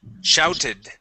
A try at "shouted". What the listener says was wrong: Yep, you had skipped over that ed ending.